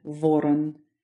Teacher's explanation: These are hard, non-palatized consonants that Russian and English share